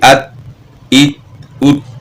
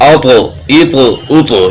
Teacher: تا میں قلقلہ نہیں ہوگا، اس لیے آواز ہوگی ات ایت ات. اور تو کی آواز اوتو ایتو اوتو، یعنی آواز ٹکرا کر واپس ہو جائے، ہلا کر پڑھنا حرف کو، اس کو کہتے ہیں قلقلہ.